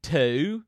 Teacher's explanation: we extend a singular syllable vowel sound into two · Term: diphthong